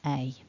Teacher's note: with a the tongue's a bit higher and the mouth the lips are sort of slightly more tense and again with a we've got two parts to this sound · with A, we've got two parts to this sound, the e and the I that blend together to become a, so there needs to be mouth movement. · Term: double vowel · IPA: /eɪ/